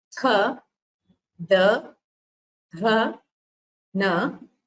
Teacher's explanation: You would have noticed while pronouncing that the tongue touches the teeth in pronouncing these letters, and so they are called dentals. They are called Dantavya Varnas.